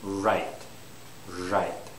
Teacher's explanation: my tongue isn't touching the alveolar Ridge